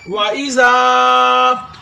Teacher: یشعرون، وَإِذَا، زال کو نرمی سے ادا کرنا ہے، اوپر والے دانتوں کو آپ زبان کے اگلے والے حصے کے ساتھ لگائیں گے تو زال نرمی کے ساتھ ادا ہوگا